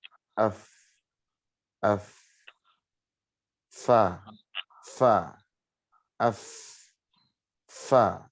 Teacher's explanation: Makhrajnya adalah bibir bawah bertemu gigi seri atas. · yang gerak itu bibir bawah ke gigi atas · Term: huruf fa